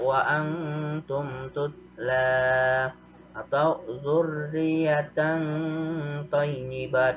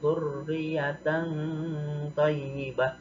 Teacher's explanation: Cara membacanya samar-samar, tidak jelas kedengarannya antara izhar dengan idgham dan dibacanya ditahan 2 harokat. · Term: ikhfa